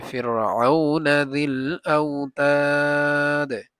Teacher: যদি কলকলার হরফের উপরে সাকিন করা হয় বা থামা হয় তখন এটাকে এই যেভাবে পড়ছি আউতাদ, এভাবে মানে দালটা একটু বাড়ি খাবে